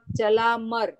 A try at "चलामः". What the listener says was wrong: चला म नहीं, मह, मह या तो चला म, चला म नहीं बोलना है, चला मह, यानी चला मह। अभी स्टार्टिंग में इसी तरह से बोलना है, चला मह, ऐसे ही बोलना है, ह की उच्चारण करना है।